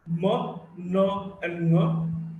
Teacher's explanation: Sound was coming through the mouth cavity and the nasal cavity was closed. And now the nasal cavity is open and the mouth cavity is closed. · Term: nasals